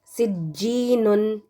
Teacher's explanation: जब जीम तशदीद वाला होगा और आप इसको मिलाकर पढ़ेंगे तो आपने इसको क़लक़ला के बग़ैर ही पढ़ना है